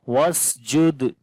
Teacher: On the dal we make qalqala